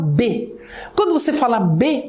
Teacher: Quando você fala B, olha só, os seus 2 lábios batem um no outro para produzir o som.